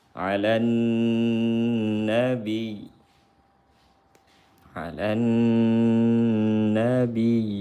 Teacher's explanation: Karena diidghamkan ke nun maka wajib dengung. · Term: idgham syamsi